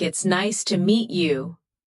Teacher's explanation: Notice the rise and fall of the tone. The voice goes up slightly at nice and falls gently at you.